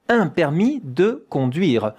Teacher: Permis, you don't hear the S at the end here.